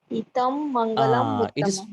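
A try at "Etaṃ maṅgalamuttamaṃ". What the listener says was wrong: It is not to be pronounced like in English. E, like ETA, exist. Etang Mangalam.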